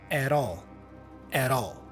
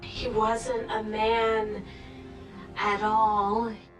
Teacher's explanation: The T has a flap sound, rara, which connects with the vowel A in all. So at all, not at all.